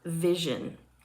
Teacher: Zh is a voiced palatal fricative.